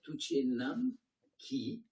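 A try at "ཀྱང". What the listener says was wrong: Alors, tu peux très bien dire Duchenam Kyang. Duchenam kyang, tu peux faire une pause. Mais c'est simplement que le kyang, attention, c'est pas un ki, c'est un kayata kyang à kyang. Duche nam kyang, le kyang, oui, on peut le faire comme ça. Mais simplement, le kyang se rapporte à ça. Duche nam kyang.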